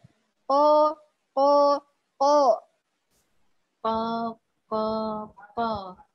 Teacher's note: Jadi huruf Qaf diangkat pangkal lidahnya supaya suaranya tebal.